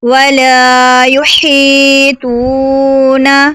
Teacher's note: توا حروف مستعلیہ میں سے ہے، اس کو پر بھی ہم نے پڑھنا ہے